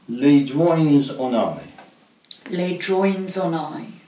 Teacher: When the noun starts with a vowel sound, the S is, as usual, pronounced in the plural.